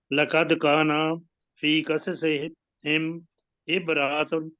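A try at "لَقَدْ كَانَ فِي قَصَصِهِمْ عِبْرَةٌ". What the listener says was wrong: نہیں، آپ کو چھوٹا رکھیے تھوڑا سا۔ میرے پیچھے پڑھیے، عبرۃ لی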